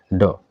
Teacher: वो है बी ड ड हमारा क्या है मूर्धन्य अल्प प्राण तो मूर्धन्य अल्पप्राण ड होता है